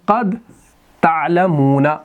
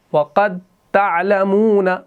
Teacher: ایک دوسرے میں یہ مدغم ہوں گے. تو دال اور تا جو ہے نا، یہ ایک ہی جگہ سے نکلتے ہیں نا، تا دال اور تا. اب پہلا ساکن ہے، بعد والا تا ہے، تو یہ دال جو ہے اس کے اندر مدغم ہو گیا. تو یہ آپ کا ادغام متجانسین ہے.